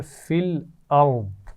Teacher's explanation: را کو موٹا پڑھیں گے اور آخر میں ضاد ہے، موٹا ہے لیکن ساکن کریں گے کیونکہ وقف کر رہے ہیں